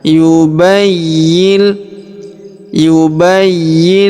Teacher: Perhatikan huruf y berharakat tasydid. Maka kita tahan dan kita tekan.